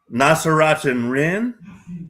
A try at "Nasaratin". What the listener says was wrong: Tin. No Rin.